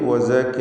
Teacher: വഖഫ് ചെയ്യുകയാണെങ്കിൽ വസക എന്ന് ഹായിൽ വഖഫ് ചെയ്യണം.